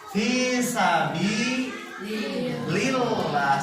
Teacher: Fi sabi lillah, sambil ditekan karena ada tasydid.